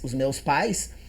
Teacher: Então se o A é vogal e o I é semivogal, o A é mais e o I é menos, o som diminui. Como são duas é ditongo e se o som diminui, decresce ditongo decrescente. · O que acontece? Como esse I é menos forte que a anterior na palavra pais, os meus pais, ele se agarra na anterior formando uma sílaba junto com a anterior